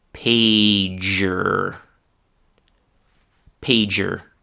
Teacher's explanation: the duh and the ya both disappear, and instead of those two sounds, you can hear instead the single sound j, the same one that you hear in the word just.